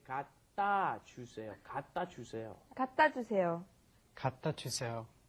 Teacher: there's no vowel in front of the consonant, it comes up against another consonant, it gets kind of swallowed. The sound doesn't come out.